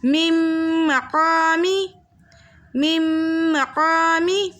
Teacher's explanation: دو حرکت کی مقدار ہم نے غنّے کے ساتھ پڑھنا ہے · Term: ادغام مع الغنّہ